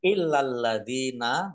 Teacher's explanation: lamnya dibaca dobel ada tasdidnya lam fathah Alif harusnya Mad thii tetapi ini karena ada tasdid